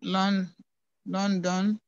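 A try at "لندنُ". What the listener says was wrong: Read the last vowel also. First read London. Then say Londonu. Say Londonu.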